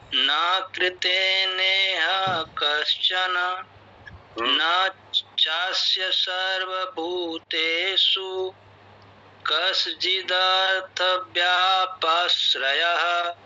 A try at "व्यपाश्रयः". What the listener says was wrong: व्यापाश्रय नहीं है, व्यपाश्रय।